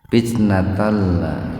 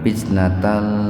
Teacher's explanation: Jadi karena tanpa mendengung jangan ditahan dua ketukan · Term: idgam bila guna